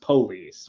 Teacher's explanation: police with the emphasis on the first syllable